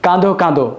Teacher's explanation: বিশেষণের ক্ষেত্রে যে অন্তিম অ শেষের দিকে অ থাকে সেই উচ্চারণটা ও এর মত হয়ে থাকে।